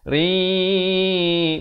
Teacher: Di sini hukum idgham bi gunnah. Ri masuk terus beserta dengung 2 harakat.